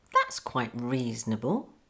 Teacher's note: again the T in quite is missed off that's quite reasonable it's quite okay just to miss off that